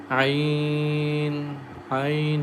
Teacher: Ain comes from the middle of the throat, so we recite as Ain, Ain.